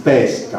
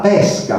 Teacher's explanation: Per esempio in italiano noi, grazie alla diversa apertura delle vocali, possiamo distinguere per parole come pesca, l'atto del pescare, anzi pesca con la E chiusa, l'atto del pescare, da pesca con la E aperta, che è il frutto